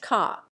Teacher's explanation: like most English accents, a Cockney accent drops the r after a vowel, for example, car is pronounced ca.